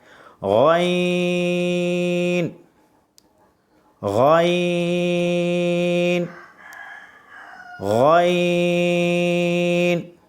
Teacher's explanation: اب غین میں بھی ہم کھینچیں گے، مد نظر آ رہا ہے، اور یہ حروف مستعلیہ ہے، موٹی آواز میں پڑھیں گے